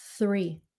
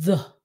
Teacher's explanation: So put your tongue out, hơi thở là nó thành three. Còn giọng nói là nó sẽ thành the